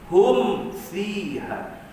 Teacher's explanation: Jelaskan bunyi mim tanpa dengung, tanpa qalqalah, tandanya ada tanda mati pada mim. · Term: izhar